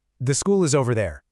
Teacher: Hear how my voice drops right at the end? That signals that this is a statement. · You've got the falling tone where your voice goes down at the end. That tells people, "I'm done.